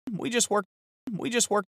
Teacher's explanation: He says just worked. The word just is so often pronounced this way with no T. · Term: drop the T